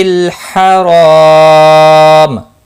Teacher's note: مسجد الحرام، ہا وسط حلق والا ہے، اس کی ادائیگی ضروری ہے، را الف مدہ ہے، ایک الف کے برابر کھینچ کر پڑھیں گے، رو زبر کی وجہ سے پر بھی پڑا جائے گا، وقف کی صورت میں میم ساکن پڑا جائے گا، اور ملانے کی صورت میم کی حرکت کو بھی پڑا جائے گا۔